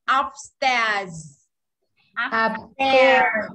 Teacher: Âm E kéo dài ra một chút và Z cuối ạ.